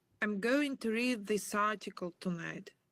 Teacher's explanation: when I get to the end of the phrase, I don't actually make a t sound. Okay, there's nothing wrong with making a t sound. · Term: glottal stop